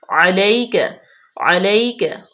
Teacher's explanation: یا سکن ما قبل مفتوح، یا لین نرمی سے